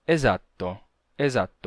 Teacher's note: um s simples rápido breve E sonorizado